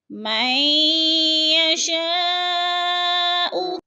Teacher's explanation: قلقلہ کا معنی ہے یدخل من یشاء، مئی پہ ادغام ہو رہا ہے، میم کو یا کے ساتھ ملا کر ادغام کریں گے، نون ساکن نہیں پڑھا جائے گا.